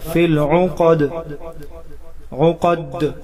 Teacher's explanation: فی العقد، قاف حروف مستعلیہ موٹا کر کے پڑھیں گے. قد، وقف کے حالات میں دال ساکن ہوگا اور قلقلہ ظاہر ہوگا